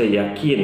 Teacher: kita terbiasa membaca kata yakin yang bahasa Arab dengan qaf dengan huruf k, yakin. Ini salah satu penyebabnya.